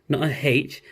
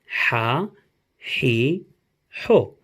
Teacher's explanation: the Ha is like a H, but it's coming from your throat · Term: Ha sound